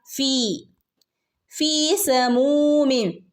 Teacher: ഫീ ഫന്റെ കൂടെ യാ മദ് വന്നിട്ടുണ്ട്, രണ്ടനക്ക നീട്ടിക്കൊടുക്കുക